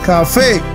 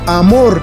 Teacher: Acento en la última sílaba, aguda.